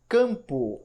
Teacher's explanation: como um elemento que indica que o ar é uma nasalizado o m dessa palavra não tem som consonantal · O M, ele funciona nessa palavra apenas como um elemento que indica que o A é um A nasalizado. O M dessa palavra não tem som consonantal. Quando você pronuncia campo, você escuta an, escuta o C, o fonema do C, como se fosse um K, e depois o fonema an.